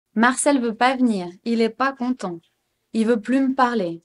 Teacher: Most of us, when we speak quickly in a casual way, we don't use the ne at all. We don't pronounce them at all.